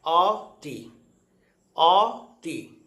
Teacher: এটা খাতায় আমরা লিখছি অ তি, কিন্তু উচ্চারণ করছি ও তি